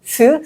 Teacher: Korean s sound is a softer sound s like s in smile